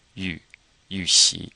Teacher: pay attention to this U being pronounced that U is kind of like a French U you have to purse your lips